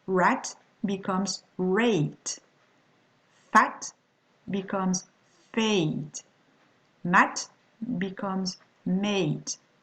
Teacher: When you've got the following combination, vowel, consonant, plus the letter E, the vowel will be transformed into a diphthong